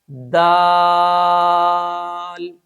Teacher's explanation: صفت جہر کی وجہ سے اس حرف کی آواز میں بلندی ہوگی۔ دال۔ نمبر 3، صفت شدت کی وجہ سے اس حرف کو سختی کے ساتھ ادا کیا جائے گا۔